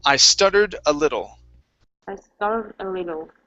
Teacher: we're working on the short I on little, and the flap T in stuttered